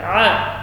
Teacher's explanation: A keluar di tengah tenggorokan